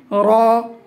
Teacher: জিহ্বার আগার পিঠ তার বরাবর উপরে তালুর সঙ্গে লাগিয়ে উচ্চারিত হয়